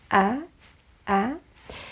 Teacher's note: So it's open wider than the other vowels and the lower jaw uh drops noticeably.